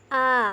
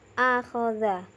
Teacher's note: tenggorokan bagian bawah yaitu tempat keluarnya huruf hamzah dan hak bunyi huruf hamzah seperti bunyi orang yang terhimpit benda